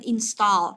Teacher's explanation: Nhớ là cái chữ A này mình đọc là âm O dài nhớ